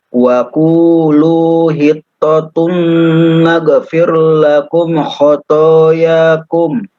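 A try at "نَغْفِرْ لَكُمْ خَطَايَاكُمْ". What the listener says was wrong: Baik, huruf ghainnya ya, bukan huruf qalqalah, nanti dilatih lagi. Fir. Ra-nya kebetulan sebelumnya berharokat roh, jadi tipis. Naghfir ya, naghfir lakum khotoyakum. Ko-nya tebal.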